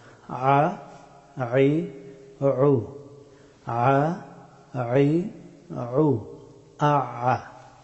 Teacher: আইন হরফটি উচ্চারিত হয় গলার মধ্যখান থেকে